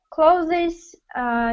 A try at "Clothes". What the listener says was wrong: Да, вот надо стараться, чтобы там и с было.